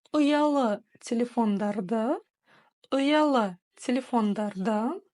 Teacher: Опять буква У, которая читается очень и очень кратко, лишь намек на ее существование